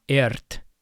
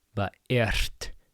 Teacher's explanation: just know r before a t is devoiced · So it's not ert, but ert. You just breathe out, you exhale as you roll your R. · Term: devoiced R